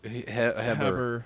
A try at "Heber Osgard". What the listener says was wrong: The H is silent.